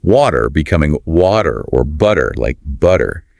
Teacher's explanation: This happens when a T sound comes between 2 vowel sounds. Instead of that crisp to sound, it often softens to a quick sound, like a flap. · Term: flap T